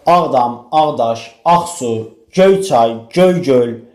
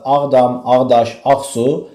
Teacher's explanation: mürəkkəb sözdə ilk sözün üzərinə vurğu düşür